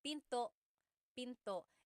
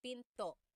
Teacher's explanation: Don't forget to stop the sound at the end. That's called a glottal stop.